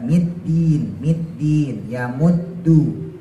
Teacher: ujung lidah ditaruh di langit-langit yang keras nah yang membedakan itu kalau Dal dia enggak punya Hames · Ditekan caranya supaya nggak keluar hamasnya, ujung lidahnya harus kuat ya. Middin, middin, yamuddu, supaya nggak keluar hamas, ujung lidahnya harus kuat.